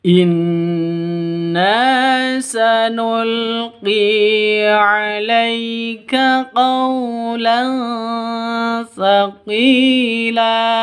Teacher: Lan berubah menjadi fathah panjang karena waqaf.